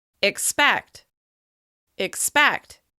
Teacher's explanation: we use this reduced I sound in order to make that first syllable quicker and easier to say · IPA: /ɪ/